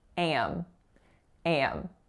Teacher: the following vowel is a, and it's going right into an M. So because of that, how I'm saying it, it's becoming a nasalized a, so am. Am.